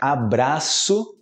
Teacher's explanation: Também vai ter o o que soa como u no final